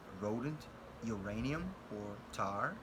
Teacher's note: Z, which is a voiceless alveolar fricative sound, as in Xerox, Paisley, dogs. R, which is a voiced alveolar approximant sound